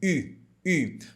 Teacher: biquinho Então como é que a gente pronuncia esse biquinho I você vai falar a letra i e fazer o biquinho ao mesmo tempo